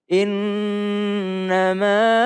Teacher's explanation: tapi karena bertemu dengan hamzah maka dia dibaca 4 sampai 5 harakat